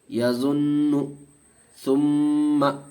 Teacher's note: نون پہ تشدید، میم پہ تشدید، اس لیے گنہ ہوگا